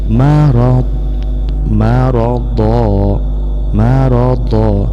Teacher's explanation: Nah, pada kata marada ini disebut dengan mad iwad, yaitu tanwin ketika kita wakaf diganti menjadi alif